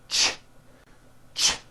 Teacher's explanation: It's a common sound in English. It's a combination of the T sound, t, and the SH sound, sh. When you put these two sounds together, you get a ch, ch. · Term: CH sound